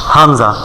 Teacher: হা এক জায়গায় উচ্চারণ হয় হামজা হামজা একেবারে হলকের শুরু হইতে হলক মানে কণ্ঠনালী কণ্ঠনালীর শুরু হইতে হামজা